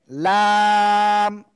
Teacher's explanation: জিব্বার আগার কিনারা উপরে মাড়ির দাঁতের গোড়ার সাথে লাগিয়ে